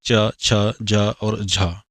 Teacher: तो दी गई ध्वनियों में च, छ, जा और झा स्पर्श संघर्षी ध्वनियां कहलाती हैं। इनका उच्चारण स्थान तालव्य है।